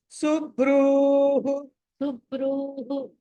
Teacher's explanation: ర కి దీర్ఘం దీర్ఘ ఉకారం అండి సు హ తర్వాత ర తర్వాత దీర్ఘం సుబ్రుహు సుబ్రూహు ఆ సో ఇప్పుడు